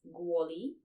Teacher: This is called assimilation. When k is pronounced as g, it's assimilation